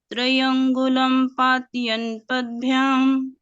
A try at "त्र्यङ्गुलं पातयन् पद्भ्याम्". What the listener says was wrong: इसमें त्रयम में जो है त्रय, आधा त्र है वो, उसको अगर हम पूरा पढ़ेंगे तो त्रय में एक अक्षर बढ़ जाएगा, इसलिए कोशिश करेंगे हम